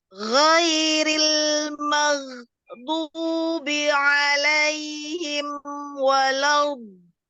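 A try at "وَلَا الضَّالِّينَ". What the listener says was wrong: Ya, tasdid nggak terlalu lama istiqolahnya. Walau itu lama banget. Jadi dia berjalannya huruf dot ketika tasdid itu berjalan aja, mau keluar nggak jadi. Walau.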